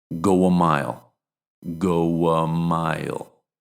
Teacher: the final sound in these words is actually a diphthong ending in w, which acts like a consonant in English